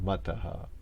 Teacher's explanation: the a that's before the H gets echoed slightly right after the H